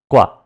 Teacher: The GW is the unaspirated form